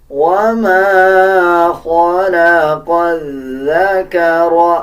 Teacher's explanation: خا کو پر یعنی موٹا پڑھا جائے گا، اس قاف کو بھی موٹا پڑھا جائے گا۔ قاف کو ذال کے ساتھ ملا کے پڑھیں گے، ذال سے پہلے جو لام اور الف ہے ان دونوں الفاظ کو سکپ کر دیا جائے گا، اور اس میں ذال کا مخرج صحیح ادا کیا جائے گا۔